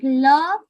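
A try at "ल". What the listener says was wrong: Mostly you think it's palate, minimally you think that it's teeth. Palate or teeth. So it's danta. Your jiva should touch the danta. It's danta.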